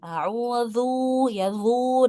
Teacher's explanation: Huruf dzal yang berharakat dahnya maka dia muncul huruf baru yaitu wau. Jadi dzunya malah panjang harusnya dibaca pendek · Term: isybaul harakah